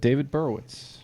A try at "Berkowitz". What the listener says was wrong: It is David Berkowitz. that K in there.